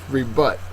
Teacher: Second syllable is accented.